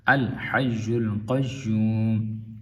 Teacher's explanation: تو قاف یہاں پہ تفخیم ہے، پر پڑھی جائے گی